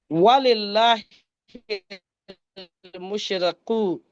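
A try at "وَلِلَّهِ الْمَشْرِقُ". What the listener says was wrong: No, it is not mushriku. Al-mashriku. Mushrik is the person who is believer. Al-mashriq is the sides. So it's a lot of difference between the meaning. But both are the different words, have quite different meaning.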